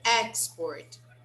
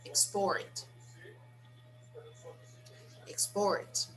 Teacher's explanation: When I say these words as nouns, the stress is on the first syllable. When I say them as verbs, the stress is on the second syllable.